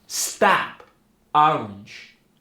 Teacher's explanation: an intense unrounded sound in the lower part of the mouth